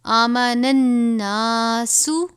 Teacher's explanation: یہاں پر بھی نون مشدد ہے، نون کے بعد نون مشدد ہے، تو اس نون کو اس سے ملا دیں گے